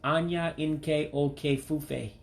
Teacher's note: You're going to drop that I that's in the last word there.